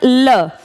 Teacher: ल बोलते टाइम जबान ऊपर जहां ऊपर वाले दांतों की जड़ है वहां टच होगी और जबान वहीं रहेगी। साइड में जो जगह है वहां से हवा बाहर आई जिस कारण से यह साउंड आप क्रिएट कर पाए। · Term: पार्श्विक